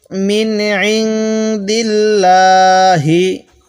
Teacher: অনেকেই আমরা এই যে লামটি দেখতেছেন, আল্লাহ শব্দের লামটি পড়তে ভুল করি। আমরা যখন দেখব আল্লাহ শব্দের এই লামের পূর্বে জের আছে, তখন আমরা ওই লামের মধ্যে আল্লাহ চিকন করে পড়ব, বারিক করে পড়ব